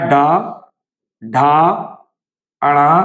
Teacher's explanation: प्रत्येक वर्ग का तीसरा चौथा पांचवा सघोष है इनके उच्चारण में कंपन्य होता है वाइब्रेशन होता है